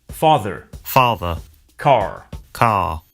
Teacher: Notice that the final R sound is not pronounced in British English. Father ends in a simple schwa vowel, like father.